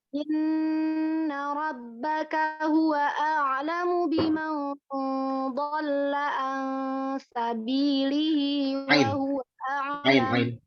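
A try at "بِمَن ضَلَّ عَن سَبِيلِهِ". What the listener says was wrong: Diulang an sabilihinya. Ain sabilihinya ainnya kurang. Diulang biman dhalla. biman dhalla.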